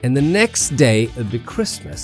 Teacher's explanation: That falling intonation signals that the thought is complete.